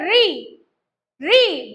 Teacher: जो आगे का जिभ्या वाला जो हिस्सा है वह फोल्ड होता है · जो आगे का जिह्वा वाला जो हिस्सा है वह फोल्ड होता है और वो कहां से लग रहा है? मूर्धा से, है ना? मूर्धा से लगता है, जहां से ये लग रहा है बच्चों वही है मूर्धा, है ना? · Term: मूर्धन्य वर्ण